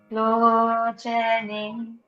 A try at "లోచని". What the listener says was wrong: లోచని అక్కడ లాస్ట్ లో వినిపించట్లేదు నాకు, అందుకు.